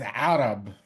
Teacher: It's not Arab, it's Arab, right? It's this pharyngeal fricative that you really need to uh, kind of practice doing things with your throat in order to pronounce it.